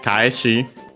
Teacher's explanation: kaeshi, accented luckily on the last mora, so regular. Because the verb is accented, yeah, then the conjugative form used as the corresponding noun is accented on the last mora.